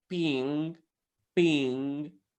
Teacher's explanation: the final g sound doesn't need to be pronounced